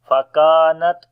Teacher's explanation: Kaf we read again in light sound and we long due to alif madda.